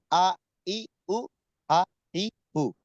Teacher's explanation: এক নাম্বার মাখরাজ হলকের শুরু হইতে হামজা